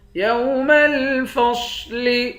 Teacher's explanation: یوم الفصل صاد کو موٹا پڑھیں گے۔